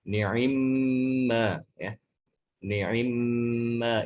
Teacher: dengan mengkasrohkan huruf ain yang tadinya itu sukun dikasrohkan jadi menjadi ni'i gitu ya.